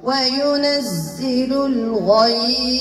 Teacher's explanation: الثاء طرف اللسان مع أطراف الثنايا العليا